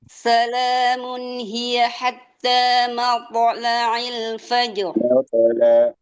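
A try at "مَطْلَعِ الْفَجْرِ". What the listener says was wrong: Matla'il fajr. Bukan matla'il fajr. Suara jangan di dalam ya. Matla'il fajr. Suaranya diringanin aja.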